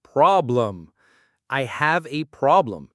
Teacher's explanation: So that second syllable, lem, is weak. We don't say problem with a clear E sound. The E becomes a schwa. It sounds like problem. · The stress is on the first part, problem. So that second syllable, lem, is weak.